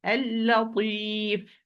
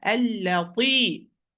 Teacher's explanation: It's muraqqaq. It's mustafil, lowered letter. The sound does not ascend to the roof of the mouth. It descends.